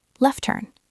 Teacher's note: If you are waiting to hear the T in left turn, you might miss the meaning. It sounds like left turn. The T is gone.